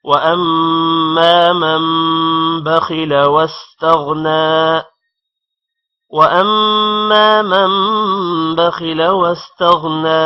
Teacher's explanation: غین بھی موٹا ہوگا اور نون پر کھڑی زبر ہے تھوڑا سا لمبا کریں گے